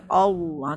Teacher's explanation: Taglis ni maknanya tengah lidah kita ni penuh ke atas macam tebal kan.